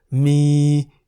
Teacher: mi in the middle tone, meaning to have, and mi in the rising tone, meaning the animal bear.